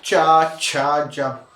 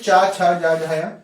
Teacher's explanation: चा वर्ग पूरा का पूरा तालव्य वर्ग में होता है, क्योंकि ये तालु से बोला जा रहा है